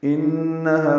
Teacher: ہا الف مدہ ہے، 2 حرکات لمبا کریں گے، ہا اقصی حلق سے ادا کریں گے